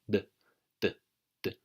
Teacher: You've got your tongue touching the back of your top teeth.